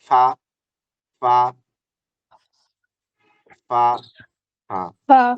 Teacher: উপরের সাথে লাগাইবা না মাঝখান দিয়ে শুধু ঠোঁটটা লাগিয়ে দিতে হবে এই যে উপরের দাঁতটা নিচের ঠোঁটের সাথে লাগাও